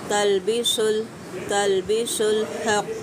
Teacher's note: क़ाफ मुस्तालिया हरूफ पुर करके अदा करें · तलबी, तलबी लाम साकिना, लेकिन लाम पे कोशिश कीजिएगा कलकला ना होना पाए